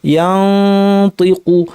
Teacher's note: উপর পাটি দাঁতের গোড়ায় জিব্বার তরফ নিয়ে কাছাকাছি রেখেছি, নাক থেকে গুন্না করছি এবং যেহেতু ত ভারী হরফ গুন্নাটা ভারী